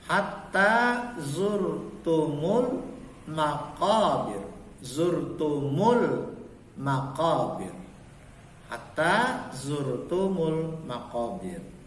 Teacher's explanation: Maka lamnya zurtumul, lamnya dibaca tipis atau lam tarkik.